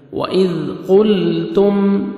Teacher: تا کو آپ نے باریک پڑھنا ہے، میم ساکن کا اظہار ہے، جلدی پڑھیں گے